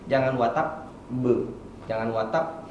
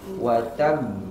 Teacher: dan ketika hurufnya ditahan tidak boleh dia seperti huruf P. Tadi ada yang baca seperti huruf P. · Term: qalqalah akbar